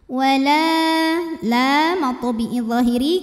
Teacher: karena ada Alif didahului fathah maka panjang lamnya dua harakat